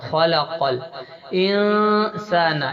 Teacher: خلق الانسان، یہاں پر اخفا کرنا ہے، نون کی آواز کو ناک میں چھپا کے پڑھنا ہے